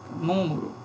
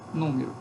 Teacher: Uma assimilação regressiva. Esse I, este E, aliás, assimila a vogal U, torna um U também.